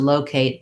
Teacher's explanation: so locate has first syllable stress